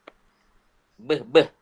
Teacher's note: Iaitu B. Beh. Konsonan letupan dua bibir.